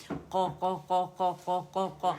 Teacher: اور یہ جو ہونٹ نا اس کو گول نہیں کرنا قو کی آواز نہیں آنی چاہیے